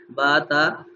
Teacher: تا جب زبان لگی تو نرمی سے لگی، بالکل تھوڑی سی معمولی سی زبان لگ رہی ہے دانتوں کی جڑ کے ساتھ